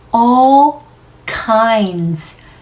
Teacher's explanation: D 소리는 스치고 지나가겠죠? 터지지 않아요.